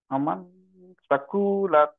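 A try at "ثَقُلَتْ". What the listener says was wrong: টান হবে না, সাকুলাত।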